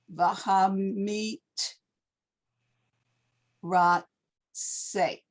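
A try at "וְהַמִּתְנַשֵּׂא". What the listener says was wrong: That's a nun. A resh. You said ra. Meat. Hamit. Na. Hamit. Vahamit. Na.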